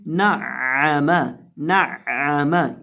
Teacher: नून को हमने आइन के साथ मिलाकर पढ़ना है और आइन को हमने बीच हलक से हलक के दरमियान से अदा करना है और आइन की आवाज़ आएगी नअमा, नअमा।